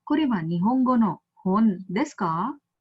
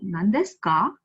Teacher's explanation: So ka is going upwards, so that is why they say it is rising.